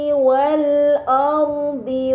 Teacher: Ini dinamakan alif lam qamariyah karena hamzah wasl pada alif lam dibaca fathah dan lam pada lam qamariyah dibaca secara jelas